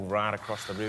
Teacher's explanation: that T at the end rolls into the next one